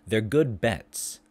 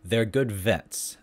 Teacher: b is a voiced bilabial stop and v is a voiced labial dental fricative